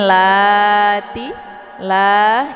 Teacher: Ini dibaca panjang dua harakat ya karena ada baris fathah tegak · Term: mad thobii muqaddar